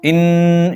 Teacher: ان کی آواز سختی کے ساتھ، دباؤ کے ساتھ ناک میں لے کر جاتے ہیں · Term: غنہ